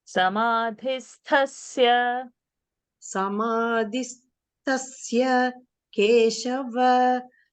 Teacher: There is no shakara, huh? So you please don't make sa into sha.